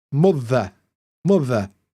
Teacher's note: our accent is non-rhotic, which means we don't pronounce the R, especially at the end of words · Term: non rotic